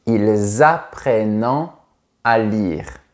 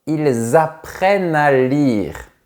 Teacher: on ne prononce jamais la terminaison de la troisième personne du pluriel. On s’arrête juste avant.